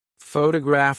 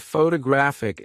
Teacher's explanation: photograph as a noun is stressed on the first syllable, but photographic as an adjective is stressed on the third